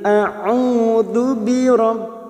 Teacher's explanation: Huruf ain berharokat dhammah diikuti wawu sukun matabi'i, dua harokat kita panjangkan